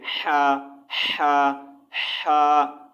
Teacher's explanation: हा की आवाज जो है हलक से रगड़ खाकर निकलते है